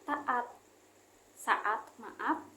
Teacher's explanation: Terdapat vokal yang sama dalam silabel yang berbeda, meskipun letaknya berdampingan, tetapi pelafalannya tidak melebur. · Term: deret vokal